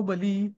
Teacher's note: कोणी कोणी ना बली असं ऱ्हस्व म्हणतात, तो बली ऱ्हस्ववाला नाही, ते बली दीर्घ आहे.